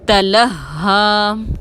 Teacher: تلہا میں ہا مشدد کو مضبوطی اور دباؤ کے ساتھ ادا کریں گے